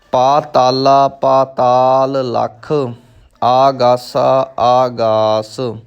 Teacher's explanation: ਇੱਥੇ ਹੁਣ ਧਿਆਨ ਦਿਓ, ਪਾਤਾਲ ਤੋਂ ਬਾਅਦ ਲੱਖ ਹੈ, ਦੋ ਲੱਲੇ ਇਕੱਠੇ ਹੋ ਰਹੇ ਨੇ। ਪਾਤਾਲ ਦਾ ਆਖਰੀ ਅੱਖਰ ਲੱਲਾ ਹੈ ਤੇ ਲੱਖ ਦਾ ਪਹਿਲਾ ਅੱਖਰ ਲੱਲਾ ਹੈ, ਇਸ ਲਈ ਥੋੜ੍ਹਾ ਜਿਹਾ ਰੋਕ ਕੇ ਆਪਾਂ ਅੱਗੇ ਚੱਲਾਂਗੇ